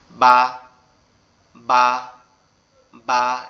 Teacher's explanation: বাটা আমাদের দুই ঠোঁটের নরম জায়গায় একসাথে লেগে থাকবে, লেগে আওয়াজ হবে বা, বা, বা, এরকম ভাবে আওয়াজ হয়ে বের হবে।